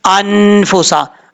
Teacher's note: یہاں پر آواز کو ناک میں چھپا کر پڑھیں گے ایک الف کی مقدار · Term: اخفا